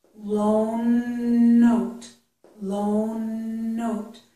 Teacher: Stretch out that n, and then it will sound like it can be used for both words.